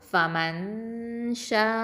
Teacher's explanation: அப்போ இங்கே என்ன சட்டம், எஹ்ஃபா பண்ணணும், மறைச்சு குன்னா செஞ்சு ஓதணும்.